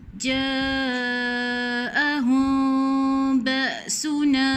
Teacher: Ikhfa syafawi. Jangan sebut tepat pada mim. Renggangkan sikit seolah-olah macam boleh letak sehelai kertas.